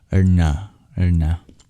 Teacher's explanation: And I think that's most of the diacritics, besides the dot below the N's, which is also a retroflex. We tap our hard palate with the back of our tongue to produce that N